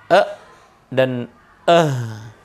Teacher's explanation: posisinya huruf ha dan hamzah keluar dari pangkal tenggorokan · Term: hamzun ha'u